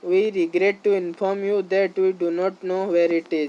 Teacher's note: Falling tone to convey finality and seriousness.